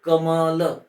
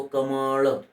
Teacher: या ळ चा उच्चार मूर्धन्य आहे म्हणजे ल चा उच्चार करताना आपल्या जिभेचा स्पर्श ठीक आहे मूर्धेला होतो मृदा हा आपल्या मुखातील वरचा भाग आहे जो कठोर तालू आणि